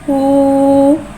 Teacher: वाव साकिन है, वाव साकिन से पहले पेश आ रहा है, वाव मद्दा हो रहा है, लिहाजा वाव मद्दा को एक अलिफ यानी 2 हरकत के बराबर खींच के पढ़ेंगे